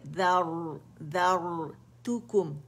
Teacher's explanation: را ساکن سے پہلے فتح آ رہی ہے تو یہاں موٹی پڑی جائے گی را